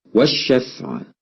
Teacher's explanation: الفاء تخرج من بطن الشفة السفلى مع الثنايا العليا. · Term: مخرج الفاء